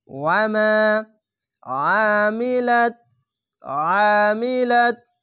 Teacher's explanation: ওয়ামা যাবার পাশে খালি আলিফ এক আলিফ টেনে পড়বেন, ওয়ামা আমিলাত আমিলাত আইনটিকে মোটা করে গলা চিপে পড়বেন